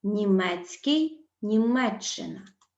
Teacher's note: скі скій спостерігаються такі зміни СК змінюється на шч Херсонський херсонщина СК змінюється на ч